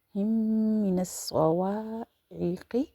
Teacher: دونوں جو کہ میم ہیں سیم لیٹر یہاں یوز ہو رہے ہیں، تو ایک کو دوسرے میں اس طرح سے ملائیں گے کہ سنگل لیٹر پڑھا جائے گا، اور میم کی وجہ سے یہ غنہ کی آواز بھی آ رہی ہے